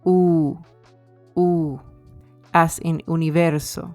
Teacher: So the lips are rounded and protruded like, for example, when you are going to blow out a candle.